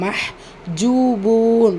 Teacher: வாவ் மத்தா இருக்கு இரண்டு ஹரக்கத் அளவு நீட்டம் கொடுத்து ஓதுங்க